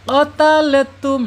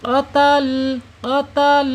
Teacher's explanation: Kalau kita tidak jeli, lam yang sukun ini akan mantul ya.